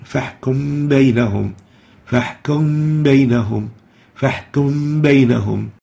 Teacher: Meme still, sakina, with ba vowelized, gives us labial ikhfa. And we call this ikhfa labial or labial masking in order to differentiate it from the ikhfa of the noon.